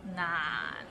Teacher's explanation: we start with n and ends with another n and it's in a low tone